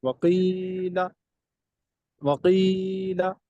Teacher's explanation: یا مدہ تو واضح پڑھیں گے لیکن لام کو دراز نہیں کریں گے